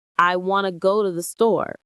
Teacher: the small function words like to and the become very weak and fast. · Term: connected speech